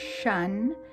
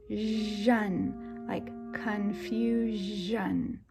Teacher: occasionally occasionally when we see t-i-o-n or s-i-o-n in a word sometimes the voice box is off like shun and sometimes the voice box is on like zhan